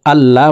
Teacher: আল্লাহুম্মা লাকা সুমতু। আল্লাহ, এই লামকে ল বলে পড়তে হবে, মোটা করে পড়তে হবে